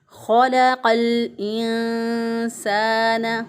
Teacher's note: लाम साकिन, साकिन हरफ को पीछे वाले क़ाफ के साथ मिला दिया।